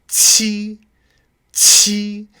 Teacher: And then qi is heavily aspirated.